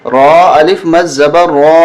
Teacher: را کو موٹا کریں اور زیادہ کھینچیں 4 الف تک ، بڑی مد ہے، را الف مد زبر را، حمزہ پیش